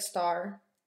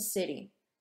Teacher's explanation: It's something that we hear, and it's a sound that may sound different in its context, just like star and city. In star, we can really hear the T sound, but in city, it's more like a D sound. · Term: allophones